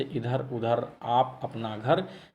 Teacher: निरनुनासिक वो होता है जो केवल मुंह से बोले जाने वाले सस्वर वर्णों को निरनुनासिक कहते हैं